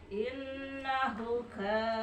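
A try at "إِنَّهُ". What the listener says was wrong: Kuna panjangkeun masalah innahu dua harakat.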